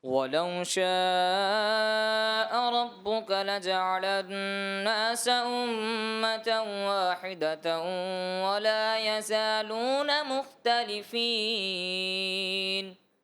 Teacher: ایسا لگا کہ ولو میں ناک میں آپ کی آواز چلی گئی. وَلَوْ شَاءَ رَبُّكَ میں بھی ایسا لگا کہ تھوڑا سا ناک کی طرف آپ آواز کو لے کر کے گئے.